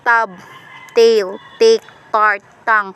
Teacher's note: voiceless alveolar stop t initial